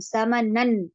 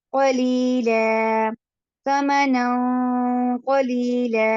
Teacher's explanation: نن جب ہم پڑھتے ہیں نن ثمنن تو ہماری زبان اوپر ٹچ ہوتی ہے, لیکن جب ہم نے دیکھا ثمنن کے بعد قاف آ رہا ہے تو ہم کیا کریں گے, زبان کو ٹچ نہیں ہونے دیں گے, ہم پڑھیں گے ثمنا, نون کی آواز کو ناک میں روک لیں گے